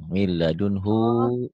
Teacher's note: Min ladunhu di sini, menurut Ibnu Katsir dalam tafsirnya itu ada hu di situ tetap dibaca panjang.